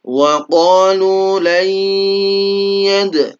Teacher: nun mati ketemu ya maka disebut idgham bi gunnah. Idgham masuk kemudian didengungkan.